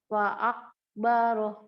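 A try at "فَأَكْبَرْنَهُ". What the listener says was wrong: Bagus, tapi qafnya harus ada keluar dong qalqalahnya. Nah, mantulnya cepat. Fa'akobaroh. Iya gitu. Jadi yang qalqalah itu memang harus keluar, jangan fa'akbaroh. Nah, ini nelen namanya ya, nggak boleh.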